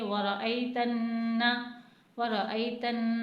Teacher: نون الف زبر نا، الف مدہ بن رہا ہے، اسے تھوڑا سا کھینچیں گے